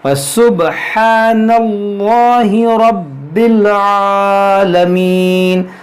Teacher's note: را کو بھی موٹا پڑھیں گے کیونکہ زبر ہے